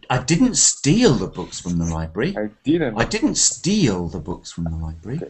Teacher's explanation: a bit more stress on the word steal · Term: stressed word